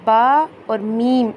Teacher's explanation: जब आप ऊपर वाला होंट और नीचे वाला होंट आपस में मिलाएंगे तो बा और मीम की आवाज निकलेगी